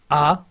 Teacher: ऐसे स्वर जिनका उच्चारण करने में मुख का पूरा द्वार खुलता है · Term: विवृत